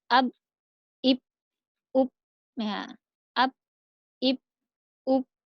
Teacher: 2 bibir yang tertutup, yaitu huruf ba, ab, diingat-ingat ini belum kita qalqalahkan, jadinya ab, ib, up, ya.